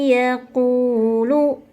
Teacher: memasukkan Nun tersebut ke dalam tidak dijelaskan nun-nya seperti hilang kemudian kita dengungkan selama dua ketukan